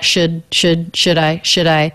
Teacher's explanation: The word should, I would say is, I would write that with a schwa, should I. The D is a flap sound because it comes between 2 vowels or diphthongs.